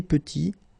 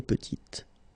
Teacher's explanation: Final T is not pronounced, and then when you add this E at the end, you get the sound T, petite. Okay, il est petit, elle est petite.